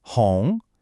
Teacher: This one's a rising second tone like you're asking a question.